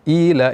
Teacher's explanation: ta'ala pada ayat pertama yang berbunyi pada kata kata Ila itu terdapat Mad Thobi'i kita baca dengan sedikit panjang yaitu dua harakat tidak lebih dibaca Dua harakat Jangan dibaca terlalu panjang semisal itu sudah terlalu